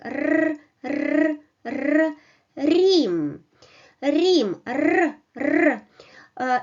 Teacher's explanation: You touch hard palates, you touch alveoles with the back of your tongue, and you produce vibration like r, r, r, rim, rim, r, r.